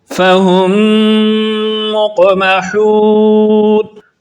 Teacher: فَهُمْ مُقْمَحُونَ، یہاں پر میم ساکن کے بعد دوسری میم ہے، اس لیے یہاں پر غنہ کر کے پڑھیں گے